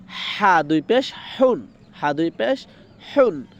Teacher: তো এই হা টা উচ্চারণ হবে গলার ভিতর থেকে।